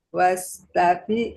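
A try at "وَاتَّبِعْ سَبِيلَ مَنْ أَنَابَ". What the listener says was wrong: Wat, Bu. Wat, bukan was. Wat.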